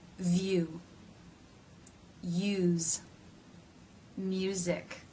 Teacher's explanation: the second sound the tongue stretches up and back you so the tongue has to make this movement from being forward and raised to being back and raised in this diphthong